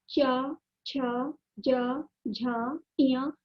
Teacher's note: तालु मीन्स जीभ के ऊपर का हिस्सा। तो जीभ जब तालु पर जाएगी तो चा, छा, जा, झा, इया का उच्चारण होगा। तो ये तालु से निर्मित ध्वनि कहा जाता है।